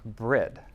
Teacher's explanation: anytime you had two consonants bookending a /r/ sound and a vowel, that /r/ sound and that vowel switched places. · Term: metathesis